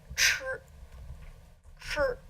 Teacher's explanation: It's like our CH sound, but your tongue is in a very different position. Your tongue is sort of bent back